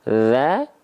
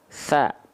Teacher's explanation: kalau zal sifatnya jahar, ya, dia tidak mengalirkan hembusan angin, cuman ngalir suara aja, namanya rokhwah. Kalau tha, dia sifatnya hams, mengalir nafas dan mengalir suara.